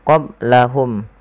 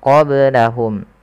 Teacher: ada ba sukun maka dibaca dengan qalqalah. Kesalahan yang terjadi adalah tidak memantulkannya.